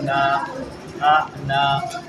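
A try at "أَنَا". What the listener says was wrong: انا اور اس کا الف کھنچے گا نہیں. لکھا ہوا بھی ہے کہ پڑھا نون یعنی کہ پڑھنے میں تو نون ہے اور لکھنے میں الف بھی لکھا ہے لیکن پڑھا نہیں جائے گا. الف نہیں پڑھا جائے گا. انا ہاں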